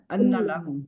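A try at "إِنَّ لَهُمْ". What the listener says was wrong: لہم، کیونکہ اگر اکٹھا ملا دیں گے نا تو وہ غلط ہو جائے گا۔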